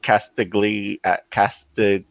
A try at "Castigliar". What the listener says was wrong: The G is silent. Castigliar.